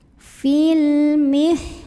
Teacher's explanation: Karena alif lam di depannya bertemu huruf qamariyah yaitu mim. Maka lam sukun ini kita baca dengan jelas, diidharkan. Oleh karena itu biasa disebut dengan idhar qamari.